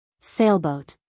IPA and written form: ˈseɪlboʊt (sailboat)